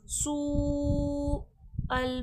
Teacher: सू अल पे देके मद है खींच कर, और सीन सख्ती सीटी के साथ पढ़ा जाएगा क्योंकि सीन हुर्फ़े सफ़ीर है।